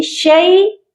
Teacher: شین یا زبر شی، یہ والی جو یا ہے یہ حروف لین کی یا ہے، یا لین ہے، اس کو ہم لمبا نہیں کریں گے، نرمی سے پڑھیں گے